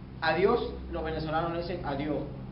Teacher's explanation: la suspensión de la s al final de las sílabas es reemplazada por la h